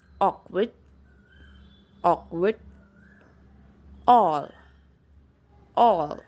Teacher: It is open mid back rounded vowel. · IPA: /ɔː/